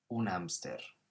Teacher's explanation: they've just taken the english word but you don't pronounce that h